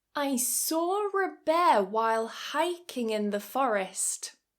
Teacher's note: This is an intrusive R. This is something that typically happens with British English speakers